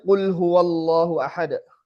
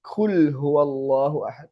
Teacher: Itu gara-gara perkara udara hames. Yang harusnya qof itu jahr tapi kita kasih hames.